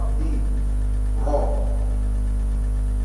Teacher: شباب ها قل يعوذ بعد الباء هنا الباء مكسوره رايح للراء الراء هنا عليها فتحه تبقى مفخمه سواء كانت الراء عليها فتحه او ضمه تبقى مفخمه